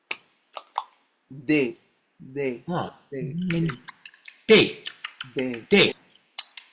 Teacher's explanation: the consonant D, for example, is pronounced by clapping the tongue above the upper teeth